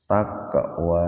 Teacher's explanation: Ada huruf qaf mati di tengah-tengah kata, jadi membacanya dipantulkan secara ringan.